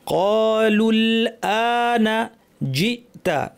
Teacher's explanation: জিমে যেন বাতাস না থাকে শক্ত